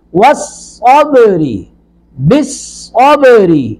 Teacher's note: صاد کو پر کریں گے، با ساکن پر قلقلہ کریں گے